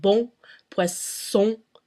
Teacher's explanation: The first one's a really long O. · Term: nasal sounds